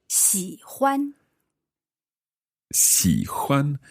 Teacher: so that's third tone and then first one